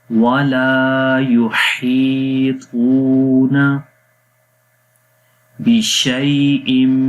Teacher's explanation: شیء یہاں پر شین یا لین ہے، یا کے اوپر جزم، اس سے پہلے زبر ہے، نرمی کے ساتھ پڑھیں گے